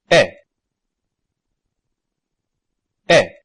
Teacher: when pronouncing E, the tip and front of the tongue lie parallel to and slightly below the curve of the hard pallet. That's to say the high front position. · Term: front vowels